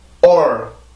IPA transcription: ɔr